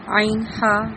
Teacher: عین، ہا وسط حلق یعنی کہ حلق کے درمیانی حصے سے نکلتے ہیں